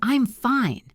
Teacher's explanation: If your friend asks, "How are you?" and you say, "I'm fine," with a high, friendly tone, it means you are good.